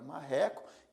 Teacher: exemplo a palavra MCO a palavra marreco tem três sílabas e a segunda sílaba a sílaba do Meio neste caso aqui é a mais forte